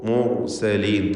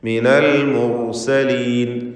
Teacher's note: ഹുക്മൻ വജഅലനി മിനൽ മുർസലീൻ, റാഇനെ തഫ്ഖീം ചെയ്യുക. മുർസലീൻ തടിപ്പിച്ച് പറയണം റാഇനെ